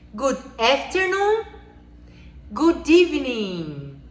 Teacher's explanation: Quando tem uma vogal e uma consoante juntas, como no good afternoon e no good evening, você vai juntar tudo para que fique como se fosse uma palavra só